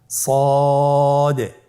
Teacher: জিহ্বার আগা সামনের নিচের দুই দাঁতের পেট ও আগার সঙ্গে লাগিয়ে উচ্চারিত হয়।